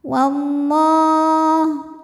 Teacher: Alif lamnya dinamakan dengan alif lam syamsiyah karena alif lam menghadapi huruf syamsiyah yaitu lam, maka alif lam tidak dibaca atau biasa disebut dengan idgham syamsi.